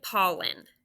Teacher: has that schwa sound in the second syllable